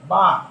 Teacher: 2 ঠোঁটের ভিজা জায়গা হইতে